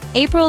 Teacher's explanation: It is a two-cllable word. Stress is on the first syllable. Say after me.